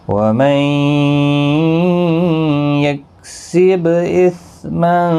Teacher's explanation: وَمَن نون ساکن کے بعد یرملون کا یا ادغام مع الغنہ ہوگا، با ساکن پر قلقلہ ہوگا۔ اثما تنوین کے بعد حروف اخفا کا فا اخفا حقیقی ہوگا، نون مشدد پر غنہ ہوگا، ما الف مدہ ہے، ایک الف کی مقدار کے برابر کھینچ کر پڑھیں گے۔